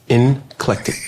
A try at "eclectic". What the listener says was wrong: It's eclectic. There's no N in it.